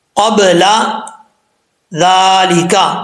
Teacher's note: زال جو ہے یہ بغیر سیٹی کے پڑھا جائے گا، اس میں سیٹی نہیں ہوگی